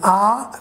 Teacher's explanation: it is open then it is at the back part of our tongue and it is unrounded